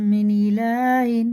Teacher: اس نون کو ایک الف کے برابر ناک میں لے جا کے چھپا کے پڑھنا ہے ، سائلنٹ کر کے پڑھنا ہے، اور اخفا کی مقدار ایک